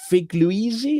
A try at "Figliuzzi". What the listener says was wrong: You get an A for effort, a B minus for pronunciation. It's three syllables.